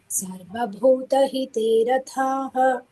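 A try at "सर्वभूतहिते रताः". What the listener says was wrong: ಅತ್ರ ಮಹಾಪ್ರಾಣನಾಸ್ತಿ ರಥಾಹ ಅಲ್ಪಪ್ರಾಣ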